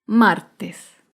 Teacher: otro ejemplo de palabra grave sin tilde es la palabra martes martes se acentúa en la penúltima sílaba